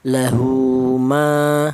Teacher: dibaca mad thaobi'i yaitu panjangnya satu alif